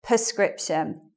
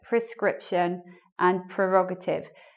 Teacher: the stress is meant to be on the second syllable in those words. So it should be like prescription and prerogative.